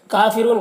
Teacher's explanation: را کے اوپر پیش ہے تو را کو پر پڑھیں گے، اور یہاں پر واو مدہ ہے، اور یہاں پر وقفی کی صورت میں نون کا زبر سکون سے بدل جائے گا تو مد عارض وقفی ہوگا۔